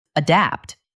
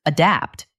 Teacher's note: The stress is on the second part, adapt.